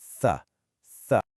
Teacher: the very tip of your tongue has to come out and make contact with your top teeth. Then you just push air through.